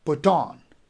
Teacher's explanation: put would be unstress and on would be stress